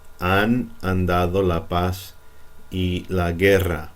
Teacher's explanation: in Spanish, H's are silent